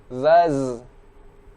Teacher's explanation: di sini ada huruf zai yang memiliki sifat sofir.